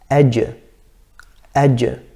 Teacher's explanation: the middle of the tongue actually touches the middle of the palate. Or the middle of the tongue touches the middle of the top palate. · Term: the jim